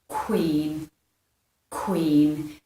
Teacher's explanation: your lips are doing that lip spreading at the end, so queen.